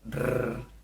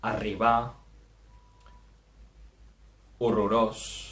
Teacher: La doble R sona com una R vibrant, rrr. És un dígraf que el trobem entremig de dues vocals, d'acord?